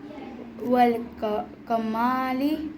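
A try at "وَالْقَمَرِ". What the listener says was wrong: कमारी नहीं वल कमरी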